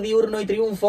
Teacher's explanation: diurno y triunfo os da la sensación de que tienen tres sílabas porque al pronunciarlas de manera relajada tendemos a separar la i y la u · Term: diptongo